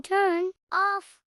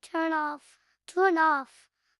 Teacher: Instead of saying turn off with a pause, a native speaker will link the end sound directly to the O sound, making it sound like turn off. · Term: linking